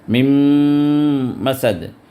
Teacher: یہاں جو میم ہے اس پہ بھی شدہ ہے، 2 حرکت تک دبائیں، میم مسد، تو یہاں میم پر بھی شدہ ہے، یہاں کے میم پر بھی، تو 2 حرکت تک دبائیں، غنہ ہوگا۔